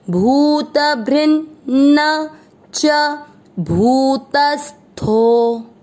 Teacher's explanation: पहले अपन आधा न भ्री के साथ पढ़ रहे हैं एंड देन जो पूरा न उसमें अ मिक्स कर रहे हैं